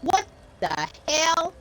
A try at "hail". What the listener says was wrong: Hail. It has 2 syllables.